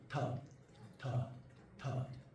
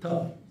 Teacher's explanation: ta, and the tongue is touching the teeth